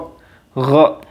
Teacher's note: So remember that غين is the brother of خاء, and many of you, I'm sure that you can pronounce kha in the proper way, so indeed you are able also to pronounce ghain if you know that it is the brother of the kha. So just pronounce ghain at the same point of articulation with kha